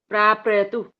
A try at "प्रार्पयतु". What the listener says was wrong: हाँ, प्रार्पयतु, प्रार बोल के बाद पयतु वो पूरा आना चाहिए, और र प्रार, ये र पूरा नहीं कर सकते। प्रार्पयतु, र आधा है, ऊपर चढ़ा हुआ है ना वो।